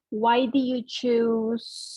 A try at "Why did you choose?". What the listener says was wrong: little bit stronger. I don't know if you're trying to say it. it sounds like you're saying do in the present tense.